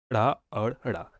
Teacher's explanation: उत्क्षिप्त ड़ा और ड़ा, इनके उच्चारण में जीभ पहले ऊपर उठकर मूर्धा का स्पर्श करे और फिर झटके के साथ नीचे आए